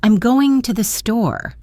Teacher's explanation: Voice is low and trails off.